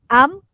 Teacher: Keluarnya bunyi huruf mim itu berkenaan tentang bibir atas dan bibir bawah jadi kalau kita kalau kita sebut dia kita matikan huruf mim